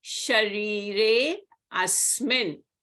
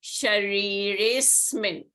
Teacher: So it will be Shariresmin. You don't pronounce the A. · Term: avgraha